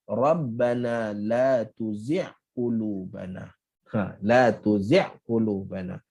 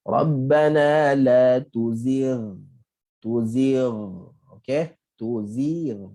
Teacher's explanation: Apabila kita tak sebut ghain ni dengan lepasan suara, maka orang ingat ghain ni adalah ain. Sebab tu kita dengar ramai orang baca doa Rabbana la tuzi' qulubana.